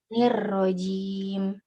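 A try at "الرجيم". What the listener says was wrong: ja itu kan dari tengah-tengah lidah ya, menekan langit ya. Tengah lidah dengan langit-langit. Kalau tadi itu kelihatannya dari ujung lidahnya yang ke langit-langit. Nirrojim. Beda ya. Nirrojim sama nirrojim. Nirrojim.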